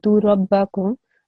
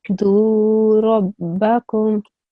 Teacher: So instead of me saying do rabbakum, I make the dal sound long.